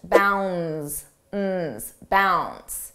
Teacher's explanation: Notice how bounds, the D is not pronounced.